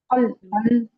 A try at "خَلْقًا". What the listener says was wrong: ख, ख मोटा, देखिए जो मोटे हरूफ हैं उनको उनको ना छोड़ें। फलकन, ख, ख मोटा, काफ भी मोटा, फलकन।